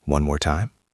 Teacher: Notice that my voice goes up at the end. It is a question.